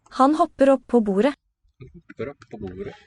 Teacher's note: The double ones really are sounded long, longer than single consonants.